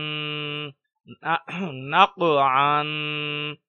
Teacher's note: آواز میں جنبش اور قلقلہ ہوگا۔